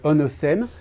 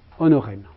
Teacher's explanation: un phénomène qu'on appelle le rotacisme et qui transforme le S intervocalique, entre le O et le E ici, en R.